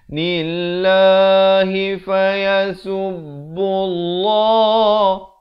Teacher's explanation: Lafaz jalalah ni jadi tebal pula 2 harakat.